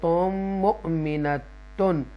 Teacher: یہاں پر گنہ کریں گے، تنوین کے بعد یعنی کہ یہاں پر ادغام ہوگا